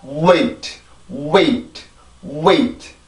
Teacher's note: 앞에 O라고 하는 아주 짧은 소리가 들어가 있어요. 이게 영어 W의 전이음의 특징입니다.